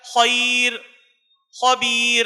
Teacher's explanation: اسی طریقے سے رائے ساکن کے باریک کرنے میں ایک قاعدہ یہ ہے کہ رائے ساکن سے پہلے یا ساکن ہو تو رائے ساکن باریک ہوگی